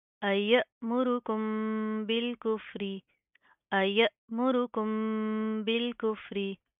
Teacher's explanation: हमजा के ऊपर जज्म आ रही है, तो हम झटका देंगे